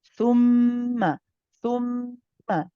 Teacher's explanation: Joining with the meme is, of course, akmal ghunna. We stay on it.